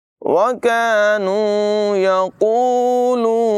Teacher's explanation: यहाँ पर काफ की आवाज़ बारीक है और ये 2 नुक्तों वाला जो काफ है इसको पूरी आवाज़ में पढ़ेंगे।